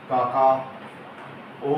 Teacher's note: इस ओ की ध्वनि को हम लगभग तीन गुना लंबा खींचते हैं · जैसे हम किसी को आवाज दें, जैसे अपन ग्रामीण परिवेश की बात करें तो किसी को संबोधित करना हो या तेज आवाज देनी हो, तो अपन कहते हैं काका ओ। इस तरह से इस ओ की ध्वनि को हम लगभग 3 गुना लंबा खींचते हैं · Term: प्लुत स्वर